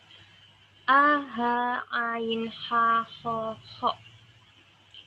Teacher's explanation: Adapun jumlah huruf idhar ada 6, yaitu a, ha, ain, ha, ho, ho. Dinamakan halki dikarenakan keenam huruf tersebut tempat keluarnya adalah berada di tenggorokan